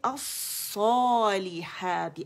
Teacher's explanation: یہ تھا ال اینڈ صا, لام اس کے اندر مدغم ہو گیا, خالی ہو گیا. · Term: لام شمسیہ